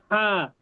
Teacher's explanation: এই হাটা আমরা একটু গলা চাপ দিয়ে পড়বো, একটু গলাটা চাপ দিব।